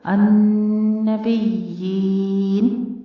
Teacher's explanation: پہلے آپ نے دیکھا نون کے اوپر شد ہے یعنی نون مشدد، اور اس کے اوپر قاعدہ آپ سیکھ چکے ہیں غنہ واجبہ، دو حرکتوں برابر لمبا کر کے اس کو ادا کرنا ہے نون مشدد کو